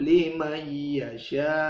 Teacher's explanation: yudha'ifu liman yasha, nun ketemu ya dibaca idgham, liman yasha, wallahu wasi'un alim, dua ketuk seperti mantobi'i, wasi'un tanwin ketemu ain idhar, wasi'un alim, mad arid lisukun.